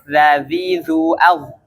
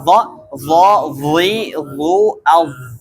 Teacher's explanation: Huruf dha itu tebal ya. Karena dia punya isti'ala dan juga idbaq ya kan, yang membuat huruf dha ini menjadi huruf yang tebal.